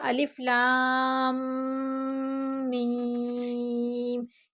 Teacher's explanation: تھوڑی دیر ہم نے جو منہ کو بند رکھا ہے اسے ہی غنہ کہتے ہیں